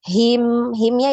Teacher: H besar ya di tenggorokan bawah